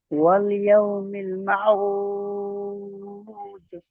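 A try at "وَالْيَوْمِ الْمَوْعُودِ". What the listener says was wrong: জি, মাউদ নয়, মিম ও জেবার মাও, মাউদ।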